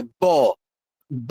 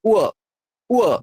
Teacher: মনে রাখবেন দুটো ঠোঁট চাপলেই বর্গীয় ব, আর দুটো ঠোঁট না চাপলেই অন্তস্থ ও